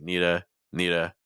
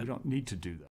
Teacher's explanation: if need is stressed keep the T sound